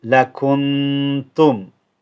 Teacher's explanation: I'm holding the nun because ta is one of the ikhfa letters. It's from that category, and therefore you hold the nun.